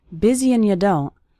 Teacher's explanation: That's very common for the word and to get reduced to just an n sound. You don't becomes you don't, and have a lot of time.